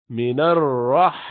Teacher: را موٹا پڑھیں گے اس لیے کہ اس سے پہلے نون پر زبر ہے